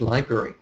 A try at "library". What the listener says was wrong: Oh, a library. I think you said library with a G. No, a library